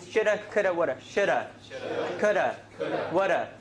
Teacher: The D's in all those three words become a flap, right? Shoulda, coulda, woulda.